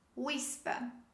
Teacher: the h sound after w is not pronounced